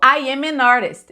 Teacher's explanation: Isso é uma pronúncia, assim, perfeita no sentido de linkar tudo e mostrar o M e o N na mesma frase